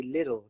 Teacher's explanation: Americans don't really pronounce it they would say little they would pronounce it like a d